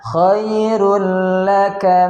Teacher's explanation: Rulla di situ ada tanwin dhammatain bertemu dengan huruf lam, maka hukumnya idgham bila gunnah, memasukkan huruf ke dalam huruf berikutnya tanpa disertai dengan gunnah.